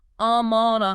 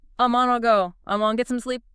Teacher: The G consonant sound often gets completely dropped, softens and vanishes leaving only the vowels. It becomes amona.